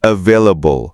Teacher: ใช้ฟันบนแตะที่ริมฝีปากล่างเบาๆแล้วเปล่งเสียงให้สั่น